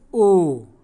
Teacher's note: ठीक है, कंठ ओष्ठ ओ। तो ओ बोल करके जब आप देखेंगे तो हमारा ओष्ठ भी प्रयोग हो रहा है और कंठ भी प्रयोग हो रहा है, तो ओ का उच्चारण स्थान कंठ्योष्ठ है।